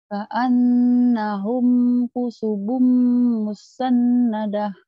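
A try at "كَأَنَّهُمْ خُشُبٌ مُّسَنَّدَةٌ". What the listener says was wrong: Ka'annahum khusyubum musannadah. Shinnya keluarin. Khusyubum. Khusyubum musannadah.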